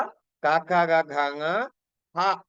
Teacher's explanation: క హ అనే ఈ వర్ణాలు మనకి కంఠ స్థానం నుంచి ఉత్పత్తి అవుతున్నాయి